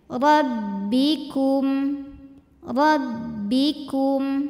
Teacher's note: ku maju masuk ke mim bibir sudah tidak maju